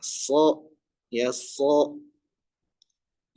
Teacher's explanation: Huruf sh di sini ya makhrajnya pada lidah yaitu ujung lidah ditempelkan ke gigi bersarah eh apa gigi seri bawah dan juga pangkal lidahnya naik ya. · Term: shad